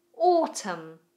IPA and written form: ɔːtəm (Autumn)